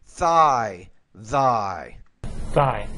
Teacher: it's a th which means the tongue needs to be between your teeth